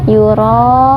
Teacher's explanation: Dibacanya jelas. Yura'un, ini dibaca panjang 4 sampai 5 harokat karena hukumnya mad wajib muttasil.